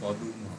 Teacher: উয়ের মাধ্যমে পদ্ম হচ্ছে পদুম, 2টো সিলেবেল ছিল, এখানে 3টে সিলেবেল। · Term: স্বরভক্তি